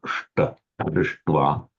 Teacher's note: whenever you get a sh followed by a ta, both become retroflex